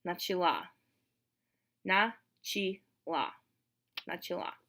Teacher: because it's reduced. In the feminine, the stress moves to the end.